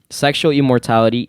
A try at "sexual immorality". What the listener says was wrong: Immorality. You said immortality.